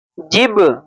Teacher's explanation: जब बा हुर्फ कलकला है और हुर्फ कलकला के ऊपर जज़म आए तो उसकी आवाज लौटती हुई महसूस होगी। इसलिए हम हिज्जे करने में जिब पढ़ते हैं और अलग से फिर पढ़ते हैं बा सबर ब जिब ब।